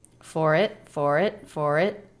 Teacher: Stop t. And the r links into the beginning vowel